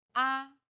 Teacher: the first tone is steady with a high pitch · The fourth tone falls sharply and quickly from a high pitch.